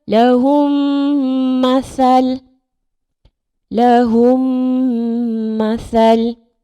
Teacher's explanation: Mim mati bertemu dengan mim hidup. Jadi cara bacaan adalah memasukkan bunyi mim ke dalam mim yang berbaris serta dengun. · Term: idgham mislain